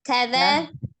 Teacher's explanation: Kaza ujung lidahnya keluar sedikit.